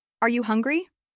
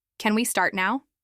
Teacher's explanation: Without the rising tone, they could easily sound like assumptions or even small commands. But when you raise your voice just slightly at the end, they become clear, polite